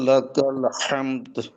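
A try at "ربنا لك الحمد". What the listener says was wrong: আচ্ছা, আপনার টান কিন্তু ছুটে যাচ্ছে। রব্বানা লাকাল হামদ, রব্বানা লাকাল হামদ।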